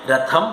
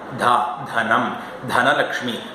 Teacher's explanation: രഥത്തിന്റെത് പുറത്തായിരുന്നു ശ്വാസം ധനത്തിന്റെ ഉള്ളിലാണ്